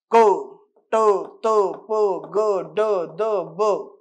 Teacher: म्हणजे काय उच्चार करताना असं वाटतं की स्फोट होते अचानकपणे तुम्ही उच्चार करताय असं वाटतं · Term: पूर्ण स्फोट